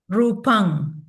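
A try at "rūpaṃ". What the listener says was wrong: rupam with a m sound, n sound. So in Sinhala, they would use the ng sound.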